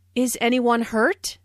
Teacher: This is a yes no question, so the intonation rises at the end.